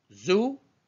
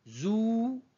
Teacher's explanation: Z c'est court, Z c'est plus long. Zou, brève, courte. Zou, un peu plus longue.